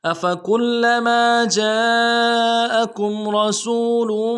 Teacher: سے ادا کریں گے، کاف کو لام کے ساتھ ملانا ہے، لام کے اوپر تشدید زور دیں گے، اگلے لام کو نرم سے ادا کریں گے · افکلما میں حمزہ کو نرم سے ادا کریں گے، فا کو نرم سے ادا کریں گے ، کاف کو لام کے ساتھ ملانا ہے، لام کے اوپر